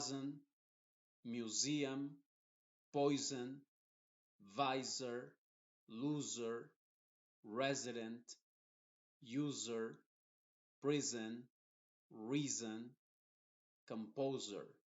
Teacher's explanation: todas estas las s están entre dos vocales por eso lo vamos a pronunciar como Z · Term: Z inglesa